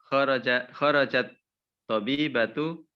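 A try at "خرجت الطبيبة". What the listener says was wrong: Kharajat dia pakai tanis kan? Ketika seperti ini bacanya ya kharajatit tabibatu kan? tanisnya sukun ya. Bertemu dua sukun diharokati kan?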